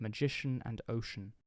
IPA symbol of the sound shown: ʃ